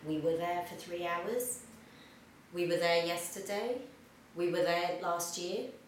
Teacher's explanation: Notice we often pronounce the were, we often pronounce it /wə/